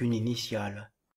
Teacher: Le E final de une s'élide avec le I initial d'initiale. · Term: élision